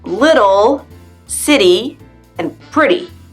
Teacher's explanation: When a T comes in between vowel sounds, it sounds more like a D. And this little phenomenon even has its own name, the flap T.